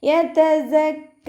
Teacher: കാഫിന് ശബ്ദ വന്നിട്ടുണ്ട്, 2 ഹർഫുകൾ ഉച്ചരിക്കുന്ന കനം കൊടുക്കുക. അലിഫ് സ്വഗീറ കൂടെ വന്നു, അപ്പോൾ 2 കൗണ്ട് നീട്ടി നിർത്തി കൊടുക്കുക.